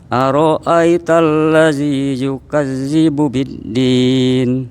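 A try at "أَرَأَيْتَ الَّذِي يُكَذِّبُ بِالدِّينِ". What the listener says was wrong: Nah, coba Bapak lidahnya dikeluarin. Ara'aital ladzi, lidahnya dikeluarin Pak. Ladzi. Jadi huruf zal itu lidahnya keluar.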